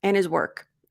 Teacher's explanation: But if you're not emphasizing and you're just speaking naturally and his work, a lot of times, probably most of the time, Americans will reduce the D